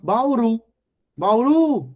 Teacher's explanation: a palavra Bauru a sílaba tônica é a última